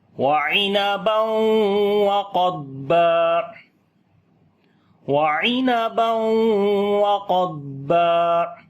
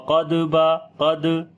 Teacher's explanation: ضاد کے اوپر صفت استطالت ہوگا، یعنی کہ یہاں پر جو ہے زبان کی موومنٹ ہوگی جو کہ تھوڑی سی لمبی ہو جائے گی، جیسے وقد با، یعنی قلقلہ نہیں کریں گے، یہ یاد رکھنا ہے.